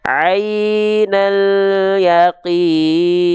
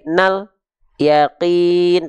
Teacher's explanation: suaranya tawasut sedikit mengalir jangan sampai memantul Nah itu aja jadi pastikan ketika teman-teman melafalkan lam sukun itu suaranya tidak memantul tapi harus ngalir sedikit enggak boleh putusinalqin jangan sampai ainal itu putus ataupun memantul Ah